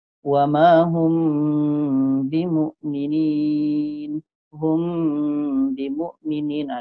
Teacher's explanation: Mim mati ketika kita baca seolah-olah dah masuk ada bunyi ba. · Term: ikhfa syafawi